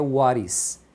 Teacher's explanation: Então aqui ele fala what is what is porque o he ele tira o h aqui fica só um is e o t emenda. Quando o t emenda no meio de vogais eles pronunciam como se fosse um r.